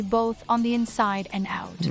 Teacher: the narration voice had a little vocal fry right there